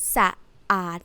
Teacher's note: The word สะอาด Anyone know the word สะอาดคะ What does it mean สะอาด สะอาด means clean as adjective สะอาด tone go like this สะอาด Both of them are low tone